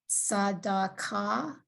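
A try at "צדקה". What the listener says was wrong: Not sa, si. Yep.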